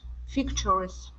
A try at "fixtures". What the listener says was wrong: Now that last word there is fixtures. Instead of fixtures, fixtures with the CH sound. Fixtures.